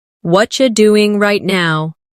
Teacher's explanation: In natural speech, what are you becomes whatcha.